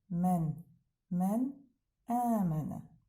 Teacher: Burda baxırsız həmzəmiz var. Həmzədən öncə sakin nunumuz gəlib və o izhar oxunacaq. Yəni aydın eşidilir.